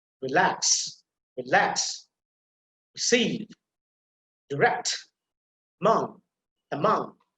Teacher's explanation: the stress will be on the second syllable